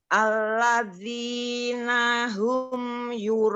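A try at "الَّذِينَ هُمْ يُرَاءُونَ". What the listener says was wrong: Ya, di sini huruf hamzah Ibu, huruf hamzah bukan huruf ain. Kurang lidahnya karena nggak keluar Ibu, lidahnya ujung lidahnya keluar.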